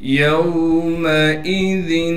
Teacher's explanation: میم کو باریک پڑھنا ہے بغیر کھینچے۔ حمزہ کو بغیر جھٹکے کے پڑھیں گے۔ ذال پر تنوین ہے اور تنوین کی وجہ سے یہاں پر اخفا یعنی غنہ ہوگا۔